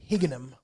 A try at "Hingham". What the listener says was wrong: Hingham. Sounds like you're throwing something in the middle where there's no Hingham.